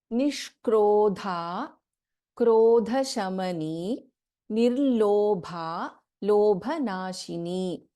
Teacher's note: In Nishkrodha, Sha is a Shanmukha Sha and Dha is a Mahapranaksara.